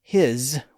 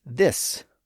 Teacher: h i s is his with a z sound, but th h i s is this with an s sound